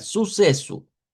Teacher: Podemos hacerlas todas con S, nada más que aquí estaría como la sílaba tónica, suceso, en la SE, como con más fuerza